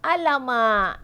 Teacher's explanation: Alamak, lidah kita kat belakang, dekat lelangit.